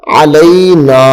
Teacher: نون چونکہ اس کے ساتھ الف لگی ہوئی ہے، الف حروف مدہ میں سے ہے تو اس لیے نون کو ہم تھوڑا لمبا کر کے پڑھیں گے